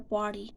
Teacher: Whenever the ta sound is between the R and Y sound, so they tend to drop or tend to change the ta sound to the D, soft D.